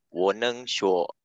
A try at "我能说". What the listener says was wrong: 说, make it lighter. 我能说.